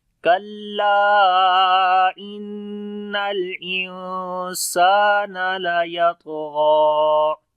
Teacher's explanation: کلا انل، نون کے اوپر شد ہے، غنہ کریں گے اور یہاں پر نون ساکن کے بعد سین آگے اخفا کریں گے، لائٹ والا. ان الانسان، سین کو لمبا کریں گے، الف مدہ ہے.